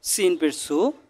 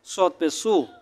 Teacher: সিন চিকন, সৎ মোটা উচ্চারণ করবেন।